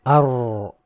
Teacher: recite it with excessive vibration, which gives the impression of multiple ra's, something like ar.